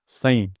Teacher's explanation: कंग सिर्फ नाक से निकल रहा है। सई सिर्फ नाक से निकल रहा है। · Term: अनुस्वार